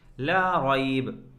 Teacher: را کے اوپر زبر ہے جس کی وجہ سے ہم را کو پر کریں گے، اور را کے بعد آنے والی یا ساکن ہے۔